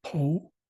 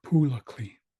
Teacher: you might pronounce it with an o sound po or you might hear an oo sound instead of so it could be it could be Pole or pully